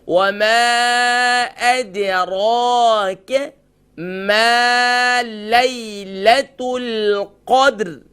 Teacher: دال لائٹ، را فل ماؤتھ، کیف لائٹ